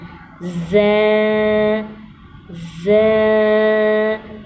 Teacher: ز سختی والا حروف ہے، یہ سیٹی کی آواز آنی چاہیے۔ اس میں اوپر والے 2 دانت اور نیچے والے 2 دانت جب آپس میں ملیں گے تو زبان کی نوک نیچے والے 2 دانتوں کے جڑ سے لگے گی تو ز ادا ہوگا۔